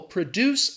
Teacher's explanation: So the businesses produce, again, that stress is on the second syllable